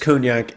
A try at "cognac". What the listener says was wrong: You're saying it wrong. Cognac. If you listen to Google's pronouncing it, it's cognac, not cone. There's no safety cones here, bro.